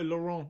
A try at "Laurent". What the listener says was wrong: Laurent. It's the R part, Laurent.